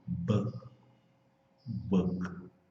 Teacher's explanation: O K praticamente não aparece, ele aparece assim bem longe e dependendo da velocidade da conversa ele some.